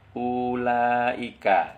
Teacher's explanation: Huruf dhaifah itu seperti dalam kata ulaika, ya, itu ada huruf u-nya itu agak panjang karena ada wawu di sana. Wawu itu tidak dibaca, tapi sebagai tanda lebih dibaca panjang U-nya untuk domahnya ya.